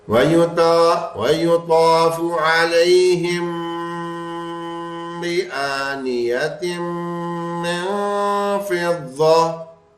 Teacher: میم ساکن کے بعد با آ گیا، تو اس میم ساکن پہ غنہ کریں گے.